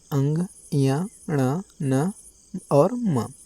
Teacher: तो नाक से जिसका उच्चारण होगा वो क्या कहलाएगा? नासिक्य वर्ण कहलाएगा।